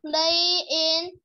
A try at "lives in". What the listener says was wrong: Again, con thấy ở đây là mình có cái gì ở đuôi này, mình phải có S đúng không? Lives.